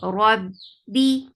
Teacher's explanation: attached ba will get sifa of shidda. The sound will be cut off abruptly. Rabbi for kasra give e sound.